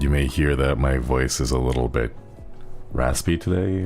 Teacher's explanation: the air won't catch my vocal cords and it'll just kind of Breeze past and make it very breathy